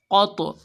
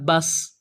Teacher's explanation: جب ان پر جزم یا یہ سکون آئے تو ان کو پڑھتے وقت ان میں ڈبل آواز نکلتی ہے، اسی کو ہم قلقلہ کہتے ہیں۔